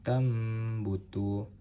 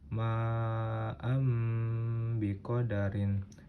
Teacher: Cara bacanya dengan menyuarakan nun mati atau tanwin serta mendengung menjadi suara mim dengan rapat kedua bibir